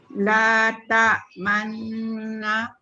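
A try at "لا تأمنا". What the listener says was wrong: Alah, sikit sangat muncung. Sikit lagi. Muncung dia tu betul-betul. Macam gini. La ta'manna.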